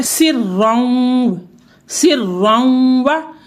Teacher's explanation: देखिए रॉ पर शद है, शद पर दो ज़बर हैं, तनवीन आई है तो रॉ को पुर पढ़ेंगे, मोटा पढ़ेंगे